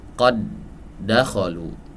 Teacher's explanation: Nah, karena dua huruf ini makhraj dan sifatnya sama persis semuanya, maka ini disebut dengan mutamatsilain. Dan dia dibaca idgham, ya, di mana huruf pertama dilebur ke huruf yang kedua